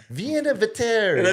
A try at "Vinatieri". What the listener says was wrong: Vinatieri. no, it's Vinatieri. You're adding like an extra E or an I in there.